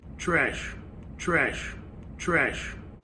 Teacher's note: both New York City and Philadelphia raise the trap vowel in certain circumstances, so you'll get instead of ah.